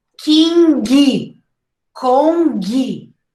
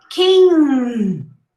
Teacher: you're gonna pronounce an n but make it a little longer okay it's like you stop before you pronounce the so you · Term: ng sound